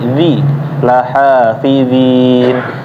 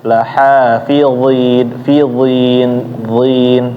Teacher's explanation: Tadi bacaannya kedengaran kayak za tapi berharokat i, zi, la hafizin. Seharusnya bacaannya ditebelin ya, isti'la,